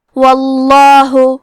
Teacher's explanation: کلمت واللہ حرف الواو پہ زبر ہے، لہذا لفظ الجلالہ کے لام کا حکم ہے تفخیم، تو ہم حرف اللام کو موٹی آواز میں پڑھیں گے